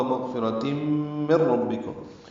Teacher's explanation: نون ساکن کے بعد را آنے کی وجہ سے ادغام کامل ہے، میم کو را سے ملا دیں گے، را پر پڑھیں گے۔